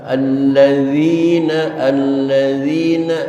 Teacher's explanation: makhrajnya di ujung lidah D hampir nempel dengan jangkar gigi atas d suaranya remuk namun tidak pecah